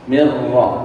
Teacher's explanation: dilebur mirro dihilangkan Nun sukunnya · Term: idgam bila gunna